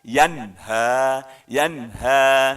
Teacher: Kembali kita ketemu nun mati, ketemu huruf H. H itu huruf di tenggorokan, termasuk dalam kaidah idhar. Maka nun matinya dibaca jelas.